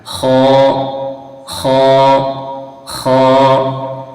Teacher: یہ بھی حلق سے نکلتا ہے، لیکن یہ جو حلق کا اوپر والا حصہ ہے منہ کی طرف والا حصہ وہاں سے خا نکلتا ہے